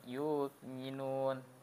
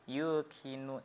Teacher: pangkal lidah nempel ke langit-langit yang lembut dalam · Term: kof